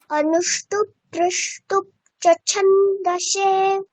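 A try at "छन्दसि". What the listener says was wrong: ছন্দসে নয়, সি দীর্ঘ ইকার।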